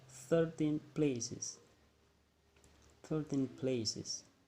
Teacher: it sounds like 13 become a weak syllable and the places become the strong one.